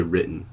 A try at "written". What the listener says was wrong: No, it's called written. Why do you skip the T? I mean, if they're two letters, that means you got to pronounce it properly.